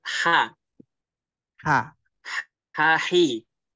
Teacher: Ha itu hames ya, keluar nafas ya.